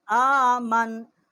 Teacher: نون کی جو زبر ہے وہ نہیں پڑی جائے گی، نون کے اوپر جزم آ جائے گی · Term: وقف